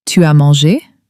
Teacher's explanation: With a rising inflection, meaning you've eaten?